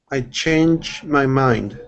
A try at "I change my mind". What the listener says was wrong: when you uh went through and pronounced that at first it sounded like an sh saying change okay just remember it's a strong puff of air CH change